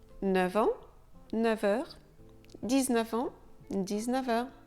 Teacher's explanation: le F de 9 se prononce V devant les mots en et heure